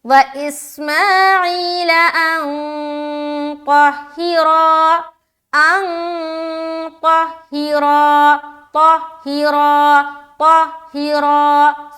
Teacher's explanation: را میں کھینچ رہے ہیں، الف مدہ کر رہے ہیں.